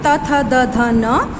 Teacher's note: त थ द ध न डेंटल है